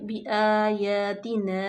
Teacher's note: مد منفصل، کیونکہ حمزہ نیکسٹ کلمے میں ہے تو اس کو ہم اڑائی الف کے برابر لمبا کریں گے